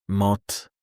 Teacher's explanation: Sounds like T are not fully released, they stop quickly.